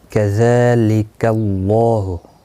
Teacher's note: زال کے اوپر کھڑی زبر ہے، ایک الف کی مقدار کے برابر کھینچ کر پڑھیں گے. لکا کو کھینچنا نہیں.